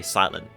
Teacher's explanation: we're dropping our Ts in English. It's becoming a silent letter, honestly. Even in the word "silent", you can just say "silen". · Even in the word silent, you can just say silen. You don't need to say the T.